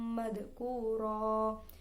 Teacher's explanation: Fathatain jika waqaf menjadi fathah panjang, dibaca panjang 1 alif atau 2 harokat, dinamakan mad iwad.